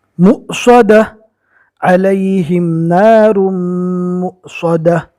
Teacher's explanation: اولئک اصحاب المیمنہ والذین کفروا بآیاتنا ہم اصحاب المشأمہ علیہم نار مؤصدہ، یہاں پر واو کی شکل میں حمزہ آ گیا اور اس کے اوپر جزم ہے، اور ہم نے قاعدہ پڑھا تھا کہ جزم والے حمزہ کو پہلے والے حرف سے ملا کر جھٹکا دے کر پڑھیں گے